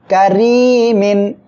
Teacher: র অক্ষরের নিচে জের আসছে চিকন করে পড়তে হবে